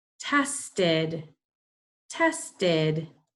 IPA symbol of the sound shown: id